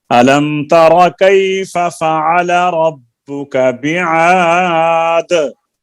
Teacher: ألم تر كيف فعل ربك بعاد دال میں قلقلہ کرنا ہے